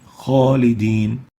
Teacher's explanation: Kha is one of the خص ضغط قذ, the elevation letter, and that's why it should be pronounced with tafkheem.